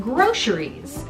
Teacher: most people out here in los angeles pronounce this word groceries with the kind of sh sound on it